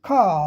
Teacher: लेकिन ब्रिटिश में ख स्वर ही लंबा हो गया। आर का उच्चारण नहीं होगा।